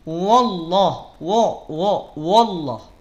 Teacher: Jadi tidak terbuka mulutnya. Sehingga bunyi vokal jadi bunyi vokal O.